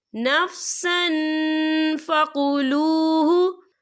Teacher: عن شیئم منہ نفسا فقلوہ، یا دیکھیں نفسن، سین کے اوپر تنوین ہے، تنوین کے بعد جو ہے فا آ رہا ہے، اور فا جو ہے اکفا کا ورڈ ہے، تو ہم یہاں اکفا کریں گے، تنوین کی آواز کو ناک میں چھپائیں گے